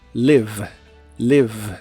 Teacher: la i de la palabra Live es corta y la v o b chica como la conozcas en inglés es labial y vibrante